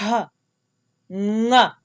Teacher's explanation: I'm using my nasal organs and the back of my throat in order to get that ng sound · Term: soft nasal sound